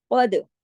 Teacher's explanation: काफ मोटा, दाल पे कलकला होगा। काफ मोटा इसलिए, काफ तो है ही मोटी फैमिली का, 7 मोटे हरूफ में से, और दाल जो है ये कुतुब जद की फैमिली से है, कलकले वाले में से।